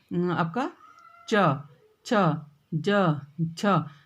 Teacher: तो आपकी जीभ कहाँ टच हो रही है, ऊपर तालु में टच हो रही है ना।